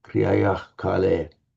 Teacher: the visarga before a k will have a slightly throaty sound if you're a Brahmin chanting Vedic, but not necessarily that same throaty sound if you're a later person chanting, say, classical Sanskrit or chanting this.